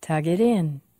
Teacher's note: we say tug longer because it ends with a voiced sound